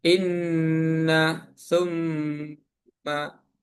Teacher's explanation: Gunah artinya dengungan suara pada huruf nun atau mim tasid selama dua harakat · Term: ghunah